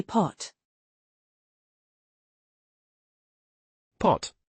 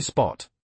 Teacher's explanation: The P in pot is aspirated, in spot, it's not. So it depends on the word position, not just the letter.